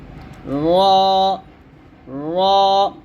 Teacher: উচ্চারণের সময় জিহ্বার আগা হালকা প্রকম্পিত হবে